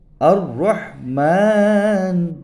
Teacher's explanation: জিহ্বার আগা উল্টিয়ে উপরের তালুর সাথে লাগিয়ে উচ্চারিত হয়